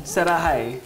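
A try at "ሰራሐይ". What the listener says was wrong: Sarahi. Don't say hi. Sarahi.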